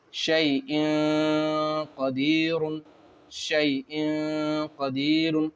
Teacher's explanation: نون کی آواز کو ناک میں چھپا کر پڑھیں گے